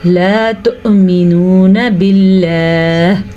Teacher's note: لفظ اللہ کو ہم پھر باریک پڑھیں گے کیونکہ لفظ اللہ سے پیچھے زیر ہے